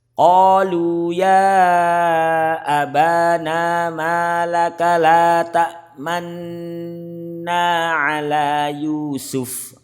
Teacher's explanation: Jadi bibir mencucu di tengah-tengah gunah sebagai isyarat bunyi dhammah karena la ta asalnya adalah la ta'manuna. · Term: bacaan Ismam